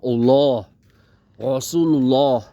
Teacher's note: dibacanya tuh ya O itu O tebel banget